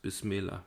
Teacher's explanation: the glottal stop and the vowel of the definite article are elided and replaced by an appendic vowel the quranic rasim retains the